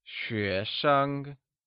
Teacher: 学生 uses the mid-rising tone on 学 and a neutral tone on 生.